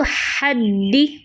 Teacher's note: ہا بیچ حلق سے ادا ہوتا ہے وسط حلق سے، اس میں سانس خوب باہر نکالنا ہے